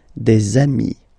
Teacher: if you make the liaison, so the link between the two, you will get des amis